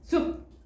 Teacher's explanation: 피읍이 음절의 끝에 올 경우에는 비읍으로 발음이 된대요. 그래서 숲은요, 숲 이렇게 되는 거죠.